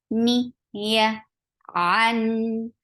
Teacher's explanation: Ni is short. Ya is very soft. You're lifting your tongue up, but you're not touching the roof of your mouth. That is palate.